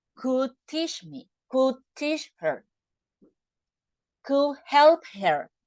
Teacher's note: we don't pronounce D when you have a consonant in the next word